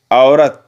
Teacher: इसमें औ का ओ सुनाई देता है